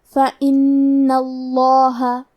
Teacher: جیسا کہ یہاں حرف نون ہے تو یہ 2 نون ہے، نون ساکن اور نون متحرک. کیونکہ تشدید زبر کا ہے لہذا ہمیں لفظ الجلالہ مطلب کلمت اللہ کے لام کو تفخیم سے پڑھنا ہے